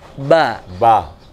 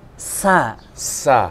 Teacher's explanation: jadi tidak perlu ada hembusan nafasnya beda dengan misalkan Sasa akan bedakan ada hembusan nafasnya · huruf ba ini punya sifat ketika dilafalkan dia tanpa aliran nafas. Oke. Dan ketika berhenti dia mantul.